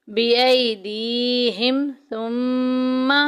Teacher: मीम मुशद्दिद आ गई, गुन्ना करेंगे। पूरे कुरान पाक में जिधर जिधर भी मीम के ऊपर शद्द आई या नून के ऊपर शद्द आई गुन्ना करेंगे, नाक में आवाज़ लेके जाएंगे।